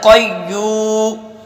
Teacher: یعنی زبان کی جڑ کو بلند کرتے ہیں تالو کی طرف. تو قاف موٹا ہو جاتا ہے